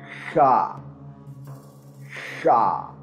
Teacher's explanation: a voiceless velar fricative, and it is produced by constricting airflow through a narrow channel at the place of articulation, causing turbulence with the back of the tongue at the soft palate without engaging the vocal cords.